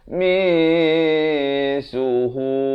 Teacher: Nak kata nun pun tidak, sin pun tidak. Di tengah-tengahnya. Mi suhu. Mi bukan min. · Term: ikhfa